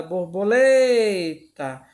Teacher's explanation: Na palavra borboleta não temos acento, mas quando a gente canta ela, lemos uma forma cantada, borboleta. A gente identifica que o lé, ele é mais forte, que é o que é mais demorado. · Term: sílaba tônica